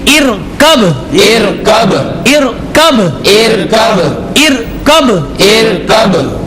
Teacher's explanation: یہاں پر حروف قلقلہ میں سے با ہے اور یہاں پر جزم آ رہا ہے، اس لیے اسے قلقلہ کریں گے